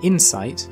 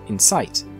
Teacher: insight, with stress on the first syllable, and incite, with strength on the latter syllable.